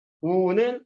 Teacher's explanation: 용언이 활용할 때 어간의 끝소리 리을이 탈락하는 겁니다. 우는, 리을이 탈락한 제 소리가 났네요. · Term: 리을 탈락